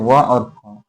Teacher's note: दंतोष्ठ निचले ओठ और दांत से